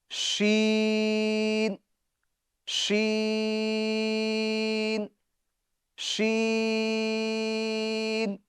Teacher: جیم کا مخرج ہم نے کیا پڑھا؟ یعنی زبان کے درمیان اور تالو کے درمیان سے جیم ادا ہوتا ہے، وہیں سے ہی شین بھی ادا ہوتا ہے۔